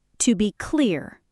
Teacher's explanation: The stress is on clear.